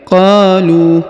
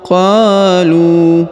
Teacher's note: sekali karena di depannya terdapat wau sukun waidza roaum kemudian qolu huruf qo dipanjangkan dua harakat karena di depannya terdapat Alif